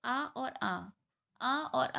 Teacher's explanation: अगर आप बोलेंगे तो ये कहाँ से आवाज़ निकलेगी, आपके कंठ से। कंठ स्वर है ये, इसको बोलते हैं कंठ स्वर है।